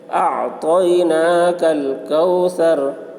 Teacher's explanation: اعطیناک الکوثر، واو ساکن سے پہلے زبر ہے، واولین ہوا، اس لیے واولین کو نرم آواز کے ساتھ جلد پڑھیں، معروف پڑھیں، مجہول آواز سے بچیں۔